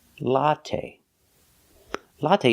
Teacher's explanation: and stop it's a short open Sound ah a latte latte put the stress on the first syllable